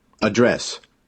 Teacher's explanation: dress noun address verb both of them stress on the second syllable